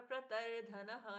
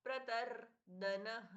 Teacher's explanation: द अल्प प्राण, यहाँ पर प्रतर धनः नहीं होगा, प्रतर दनः